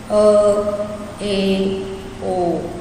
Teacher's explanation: A gente fala com a boca um pouquinho mais fechada, então por isso que a gente diz que são sons fechados, como por exemplo, E, O, né?